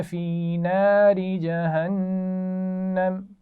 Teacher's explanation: جب وقف کریں گے تو زبر کو ساکن کر دیں گے، جہنم کے نون پر غنہ بھی ہوگا، اور پھر دوبارہ یہیں سے ملائیں گے.